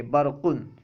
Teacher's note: برقن میں را ساکن ہے، را پر کوئی حرکت نہیں ہے، لیکن اس سے پہلے با پر زبر ہے، اس لیے را کو پر پڑھیں گے